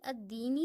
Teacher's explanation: اگر ہم خالی الدینی پڑھیں گے تو حمزہ کو دال کے ساتھ ملائیں گے، الدینی پڑھیں گے، لیکن جب ہم الف لام سے پہلے کسی حرف یا لفظ کو لائیں گے تو وہاں الف لام دونوں کو نہیں پڑھا جائے گا۔